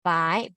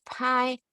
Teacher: p will have more breath